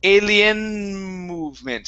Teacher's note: you do not need to finish the N sound to move on to the M